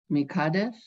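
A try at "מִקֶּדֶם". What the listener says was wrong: Mikadesh, Dem. No, it's a mem, it's a final mem.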